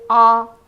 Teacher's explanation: it's open and low, yet retracted